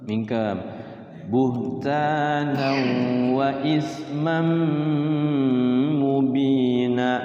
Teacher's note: tanwin bertemu mim ya, idgham biguna sama ketemu mim